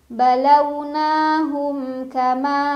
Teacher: Hum ada idhar syafawi karena ada mim sukun yang bertemu dengan huruf kaf. Dibaca mimnya jelas, bunyinya masih suara am dan tidak ditahan.